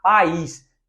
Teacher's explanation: Eu tenho duas vogais. Separei duas vogais. Eu não tenho ditongo. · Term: Iato